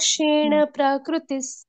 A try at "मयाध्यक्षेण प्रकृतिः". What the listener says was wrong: अभी भी प्रकृतिस ऐसे आ रहा है। सब कुछ ह्रस्व है यहाँ पर, मात्रा से लेकर। प्र, आधा नीचे र, प्र, ठीक है।